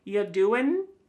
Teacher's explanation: Listen to that g at the end. Y doing. It's gone.